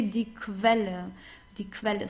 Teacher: Whenever you have a Q and U together, you pronounce it as Kv, like a K and W together, like German W.